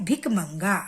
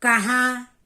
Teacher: अनुस्वार को मुंह से जल्दी से बोलते हैं और अनुनासिक को मुंह और नाक दोनों से बोलते हैं।